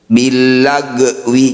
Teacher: Wain sukun, sekedar mengingatkan ini bukan bacaan qalqalah, jadi tidak perlu dipantulkan.